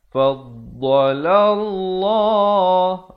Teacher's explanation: Manakala lafaz jalalah di sini dibaca tebal